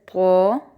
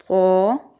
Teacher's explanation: زبان کی نوک اوپر کے سامنے والے دانتوں کی جڑ سے لگا کر طو ادا کیا جاتا ہے